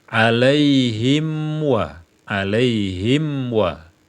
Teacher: mim ini walaupun di sukun dia masih memiliki sifat ghunah sifat dengung ya jadi sempurnakan dulu dengungnya baru menyebutkan wau alaihim wa alaihim